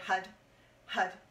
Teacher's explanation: HUD is actually spelled H-A-R, but we roll the R, and when the tongue hits the roof of the mouth, it almost sounds like a D.